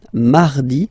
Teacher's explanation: So you can hear that you don't pronounce it that strongly, this R.